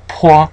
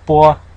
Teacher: pois is aspirated when compared to a bois, what we mean is that we're kind of forcefully letting the air out in this one. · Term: aspiration